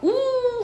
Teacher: 우 하면 입술 모양이 동그라미지지, 그치? 입술 모양이 동그라미지면 원순모음.